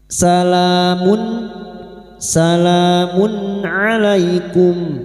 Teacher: Nun sukun atau tanwin yang bertemu dengan enam huruf ini termasuk huruf ain. Maka bunyi dumat tanwin atau dumattain dibaca jelas tanpa mendengung. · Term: idhar halqi